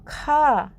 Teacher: खा में पूरा मुंह खुल जाता है बहुत सारी सांस बाहर निकलती है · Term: महाप्राण